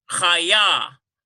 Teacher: we have a doubling here on the yod. We've got 2 Y sounds. Chaya. This is a dagesh forte as well.